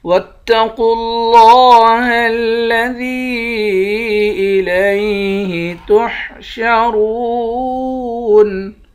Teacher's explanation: قاف کو اور لفظ اللہ کے لام کو، ان دونوں حرف کو موٹا پڑھیں گے۔ لفظ اللہ کے لام کے اوپر کھڑا زبر ہے، 1 الف کے برابر کھینچیں گے۔